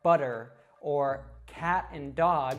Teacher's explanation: the r sound in Latin languages like Spanish and Portugese so it's just a very quick flick of the tongue at the top of the mouth